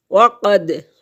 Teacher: قاف موٹا پڑھیں گے